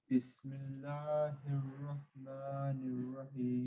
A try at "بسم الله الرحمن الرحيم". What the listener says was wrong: Same thing, empty mouth accent. Bismillah. Bismillah. Go loud. Loud. Bismillahi.